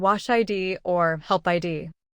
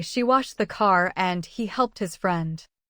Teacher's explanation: The ending is present, but it is a consonant, not another syllable.